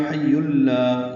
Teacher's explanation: یا پر تنوین ہے اور اس کے بعد لام آنے کی وجہ سے ادغام کامل ہوگا۔ حی اللہ، یا کو لام سے ملا دینا ہے۔